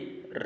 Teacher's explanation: रिरी plus आ से रा बनता है, जिसको हम मूर्धन्य कहते हैं